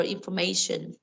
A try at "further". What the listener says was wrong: Farther. Farther. It's not future.